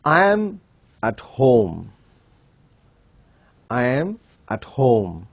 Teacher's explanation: The tune in the word home is falling at the end of the sentence or at the end of the statement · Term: falling tune